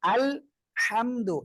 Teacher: এই হাঁটা গলাটা চেপে পড়তে হবে